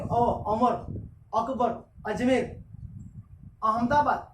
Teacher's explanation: ये जो बारिश के मौसम में जिसको आप बोलते हो अर्थ बम आते हैं, वो जब चलते हैं देखिए बीच में से हो जाता है, जब चलेगा ये इस तरह से आपकी जो जीवा है वो बीच में से इस तरह हो जाती है, यानी जीवा का बीच का भाग ज्यादा सक्रिय रहता है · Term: मध्य स्वर